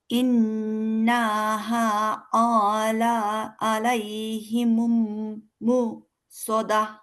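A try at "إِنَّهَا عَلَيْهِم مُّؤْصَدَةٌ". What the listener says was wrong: হয় নাই। আবার সুন্দর করে ইন্নাতে সময় হবে, হাতে আলিফ আছে, টান দিতে হবে। আবার পড়েন। আলাইহিমুম কেন? হিমুম কিভাবে হলো? ইন্নাহা আলাইহিম মুসাদা। ইনতে ঠিক আছে, নাতে টান হবে না। নাতে টান হলে কি হয়ে যাবে? এখানে একটা আলিফ হয়ে যাবে, যেটা আমরা হলে ইন্না আতাইনার ভিতরে বলি। কিন্তু দেখেন ইন্নাতে আলিফ নাই, তার মানে ইন্নাতে সময় দিব, কিন্তু নয় আকারটাতে সময় দিব না। ইন্না ইন্না।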